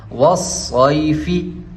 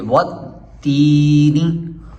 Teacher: یا لین کو کھینچا نہیں جاتا، یا مدہ کی طرح اس کو بالکل بھی کھینچنا نہیں ہے